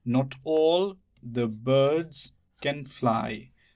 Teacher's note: the is not stressed. Birds is stressed. Can is not stressed. Fly is stressed. · Not is stressed. All can be also stressed. Doesn't matter, the is not stressed.